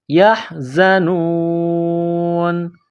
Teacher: واو پیش نو، یحزنو، نون زبر نا، یحزنون ولا هم یحزنون۔ جب یہاں وقف کریں گے تو نون کو سائلنٹ کریں گے